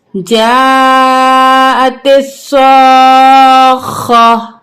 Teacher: یہ بڑی مد ہے، اس کو ہم 6 الف کے برابر کھینچیں گے